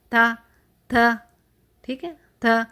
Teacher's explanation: یعنی یہ حرف زبان کی نوک کے اوپری حصہ سے اور اوپر کے سامنے والے دو دانتوں یعنی مسوڑوں کے اوپر کی جو نرم جگہ ہے وہاں سے نکلتے ہیں. یعنی زبان کی نوک سامنے والے دو دانتوں کی جڑ یعنی مسوڑوں کا جو نرم حصہ ہے اس کو ٹچ کرتی ہے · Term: دو نقطوں والی جو تا